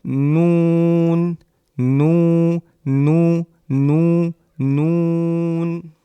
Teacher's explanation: জিবার আগা তার বরাবর উপরের তালুর সাথে লাগিয়ে